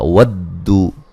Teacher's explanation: واو کو دال سے سختی سے ملائیں گے